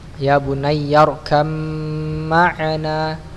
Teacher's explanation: Ketika ba berjumpa dengan mim maka ada gunnah yang harus dipanjangkan